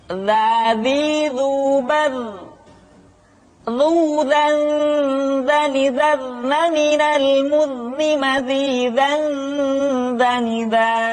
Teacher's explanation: diucapkan dengan menyentuhkan ujung lidah dengan dinding dua gigi seri bagian atas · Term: huruf dza